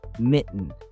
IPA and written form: ˈmɪʔn (mitten)